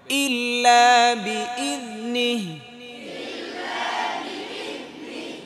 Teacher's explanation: ফিস সামাওয়াতি ওয়া মা ফিল আরদ। من ذا الذي يشفع عنده এখানে দুইটা হামজা দুইটাই স্পষ্ট করতে হবে